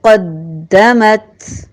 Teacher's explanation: قوف مستعلیہ میں سے دال مشدد ہے، شدت کے ساتھ اسے ادا کریں گے، تشدید کے ساتھ 2 بار، ایک شد اور ایک سکون